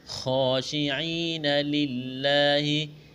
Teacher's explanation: لا الف مدہ ہے، ایک الف کے برابر کھینچنا ہے